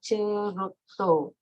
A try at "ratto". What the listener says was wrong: No, not Rotto. Ratto.